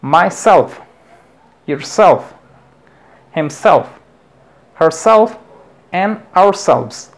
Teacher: la sílaba tónica que se va a acentuar es la segunda en este caso self